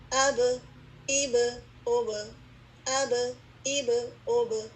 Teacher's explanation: آواز bounce back ہو رہی ہے نا، تو اس کا مطلب ہے کہ با پر کلکلا ہوتا ہے